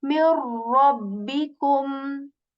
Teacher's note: we assimilate their sounds and we say mir rabbikum